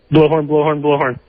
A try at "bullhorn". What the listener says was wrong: You said bluehorn, not bullhorn. Say bullhorn.